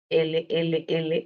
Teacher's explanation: Y en el caso de la L, podríamos decir que es una consonante lateral, L, L, L, lateral, alveolar, sonora, porque las laterales son sonoras